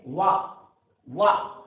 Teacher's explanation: दांतों का ऊपरी भाग यानी ऊपर के दांत और ओंठ का निचला हिस्सा, उससे जो है उच्चारण होता है, इसलिए दंतोष्ठ कहा है।